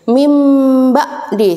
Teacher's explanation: nun sukun atau tanwin bertemu ba, maka berubah menjadi mim. Dibalik menjadi mim. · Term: iklab